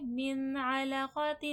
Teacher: یہاں پر عین آ گیا ہے تو یہاں پر غنہ نہیں ہوگا، اظہار ہوگا، بغیر غنہ کے وہ ورڈ پڑھا جائے گا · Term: اظہار حلقی